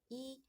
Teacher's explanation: 혀가 아에 비해서 훨씬 높은 위치에서 소리가 나게 됩니다. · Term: 고모음